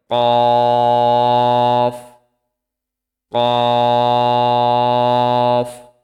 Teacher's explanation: জিহ্বার গোড়া তার বরাবর উপরের তালুর সঙ্গে লাগিয়ে উচ্চারিত হয়